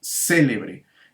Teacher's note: la sílaba tónica se ubica en la antepenúltima sílaba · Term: palabra esdrújula